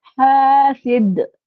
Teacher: حاسد، دال پہ ہم نے قلقلہ بھی کرنا ہے